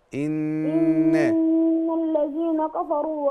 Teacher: حرف غنة مشدد حركتين